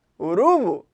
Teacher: ela seria uma paroxítona, porque a segunda sílaba é a sílaba tônica